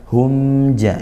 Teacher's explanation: mim sukun bertemu huruf jim, yaitu izhar syafawi, mim sukun bertemu jim dibaca jelas